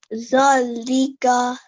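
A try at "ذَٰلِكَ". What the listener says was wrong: Dhalika. Remember, this is not a buzzing sound. It's a the sound. Dhalika. It's a dhal.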